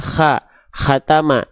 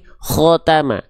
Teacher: Kalau dia termasuk ke dalam huruf yang tebal, itu ketika berharokat fathah, dia tidak akan terdengar seperti vokal A, tapi dia akan terdengar seperti vokal yang condong seperti O.